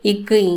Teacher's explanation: நாக்கோட முதற்பகுதி அன்னத்தின் அடிப்பகுதியில் சேர்த்து இக்கு இங் அப்படின்னு சொல்லணும்